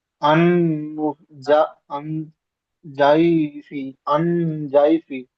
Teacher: আনজয়ফি, জি, আইনের উপর যাবার আছে, যাবারটি হারাকাত, হারাকাতের পড়া তাড়াতাড়ি পড়তে হয়, টান দেওয়া নিষেধ। ইকফার 15টি অক্ষরের মধ্যে জোয়াদ আছে, তাই একে নাকে তুলে একালি পরিমাণ গুণনা করে পড়তে হয়